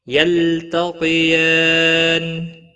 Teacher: یلتقیان، لام ساکن کو ہلانا نہیں۔ تا باریک پڑا جائے گا، قاف حروف مستعلیہ میں سے ہے، پور پڑا جائے گا